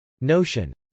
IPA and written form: nˈoʊʃən (notion)